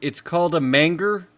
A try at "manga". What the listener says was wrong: It's called a manga. Japanese manga. Where's the R?